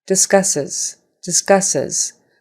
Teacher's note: Those two S's have an S sound, but the S on the end is a Z sound.